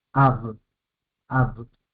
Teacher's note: alef muda, kametz, vocal larga, y una B que hace el fonema de V, ab, ab, una sílaba cerrada por la B.